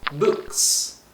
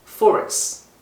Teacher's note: 고심 끝에 언어 전달자는 이 공통명사를 언급한 뒤 바로 바람소리인 무성음 s라는 소리를 붙여 복수의 표현을 만들기로 한 거죠. 예를 들어 책들을 언급할 때 book에다가 s라는 신호를 붙여서 books.